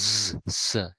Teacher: quite a lot of friction is made by putting the tongue quite close to the alveolar ridge, but not completely against the alveolar ridge. Because if it made a complete obstacle, we would make a stop practically. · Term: fricative sound